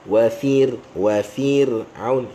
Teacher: ra tu kita baca nipis dengan cara kita bawa ke arah senyum